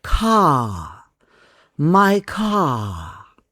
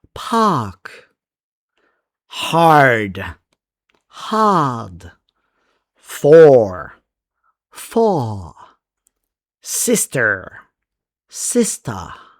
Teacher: So, you will say car. However, in British English, the R is soft or even silent. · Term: R sound